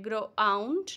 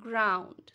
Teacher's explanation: we say ground in one go we do not say like grow out no we say ground so it has one beat only